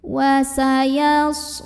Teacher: huruf shad punya sifat yang tidak memiliki lawan, namanya sofir, jadi ada desisan. Wasayas lau ada harfulin atau huruf lin karena ada waw sukun yang didahului fathah, maka dibacanya cukup kita lembutkan saja.